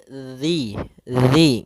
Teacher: makhrajnya adalah ujung lidah ujung lidah kita menempel dengan gigi seri atas gigi seri atas sehingga atau bisa kita gigit sedikit zzi dzi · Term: huruf Zal